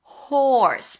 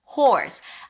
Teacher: we start with an H sound, then the or as in for. Horse. Make sure you pronounce the H.